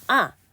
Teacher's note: 가장 높은 음에서 가장 낮은 음으로 뚝 떨어지듯이 발음. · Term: 사성